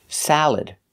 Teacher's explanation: just make sure you put the stress on the first syllable